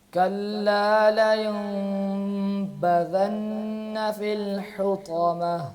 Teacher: پہلے غنہ ہے اور پھر با کلیئر ہے. كلا لينبذن في الحطمة.